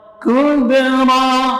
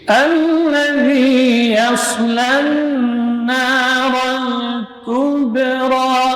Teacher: Kaf syiddah dan hamas. Kub, qalqalah sughra, tipis. Yang tebal di sini huruf ra-nya.